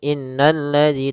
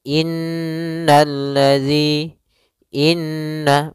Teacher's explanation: di sini ada huruf nun yang berharakat tasydid maka cara membacanyaitu kita menahan suara nunnya suara Nun kita tahan-tahan dulu baru dibaca jangan langsung innalladzi tapi tahan dulu dua ketukan innalladzi Inna maka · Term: gunah